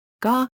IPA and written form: ɡæh (Gah)